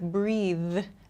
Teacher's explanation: This th sound at the end, I have to use my vocal cords to make this sound.